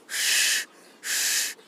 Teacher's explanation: जैसे ह और श में जीभ हम तालु से स्पर्श करते हैं, तो तालु से स्पर्श करते हुए जब ह की ध्वनि निकालेंगे तो जीवा जो है तालु से स्पर्श रहते हुए हवा निकलनी चाहिए। श, श, और अ मिला दे तो श श।